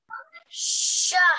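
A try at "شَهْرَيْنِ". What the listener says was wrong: Very nice. That was very nicely read. Well done. And the yaleen was read correctly as well.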